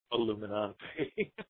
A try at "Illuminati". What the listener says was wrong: And it's Illuminati. Not Nanti. No, Illuminati. No N. Illuminati.